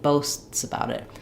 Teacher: But you do hear two separate s's. Because if I just said it with two s's and no t sound, it would sound like boasts. It would be a continuous s sound. Boasts. I am kind of making that T in that my air is stopping.